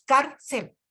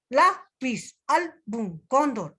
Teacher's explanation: La acentuación está en la penúltima sílaba, porque la última vendría a ser la C. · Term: graves